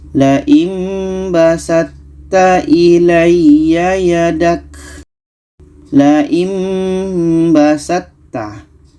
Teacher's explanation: Ta bertemu ta, maka ta ini yang sifat asalnya adalah qalqalah tidak jadi karena kita masukkan ke ta. Untuk makhrajnya sama-sama ujung lidah bertemu dengan pangkal gigi seri atas, maka ta ini kita masukkan ke ta.